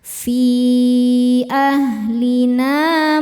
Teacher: na hukumnya mad thobi'i zohiri sebab ada alif sebelumnya fathah. Cara bacanya panjang dua harakat. · Cara bacanya panjang dua harakat. Fi ahlina mus syinnya menyebarkan angin dalam mulut ya. punya sifat namanya tafasyi.